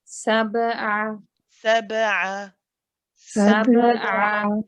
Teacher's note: It's one of the bouncy letters, or the letters that have qalqala. The qalqala here should be said really with no effort.